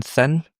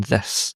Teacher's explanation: One is voiceless, you don't vibrate your vocal cords, and the other is voiced.